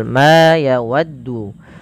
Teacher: Pada lafal ma ini panjangkan huruf ma sepanjang 2 harakat karena ia memiliki huruf alif. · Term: huruf mad